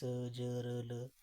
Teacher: तो ये आपके दंत मूल से इनका उच्चारण हो रहा है, जैसे स ज र ल, ये आपके वतस्य व्यंजन है।